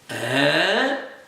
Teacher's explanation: Tone number 3 is the falling rising tone.